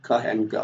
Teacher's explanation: The back of the tongue moves up to the soft palate so that we have the velar. We have k and g.